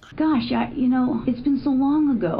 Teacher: there's this upward tone in her voice that's different than uptalk. Completely different than uptalk.